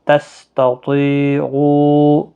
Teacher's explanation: پہلا والا تا باریک ہے، دوسرا تو حروف مستعلیہ میں سے ہے، پور پڑا جائے گا۔ · طی یا مدہ بھی ہے، او یہاں پر مد منفصل ہے، 3 الف کی مقدار کے برابر کھینچ کر پڑھیں گے